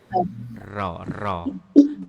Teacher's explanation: Ra makhrajnya ujung lidah, al-lisan ujung lidah naik ke atas langit-langit. Kemudian mempunyai sifat yang disebut dengan takrir.